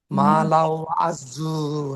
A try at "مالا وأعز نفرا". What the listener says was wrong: ভালো মতো দেখো, একটা অক্ষর বাদ পড়ে যাচ্ছে।